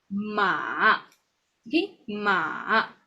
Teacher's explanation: So we go down first and then we go up. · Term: third tone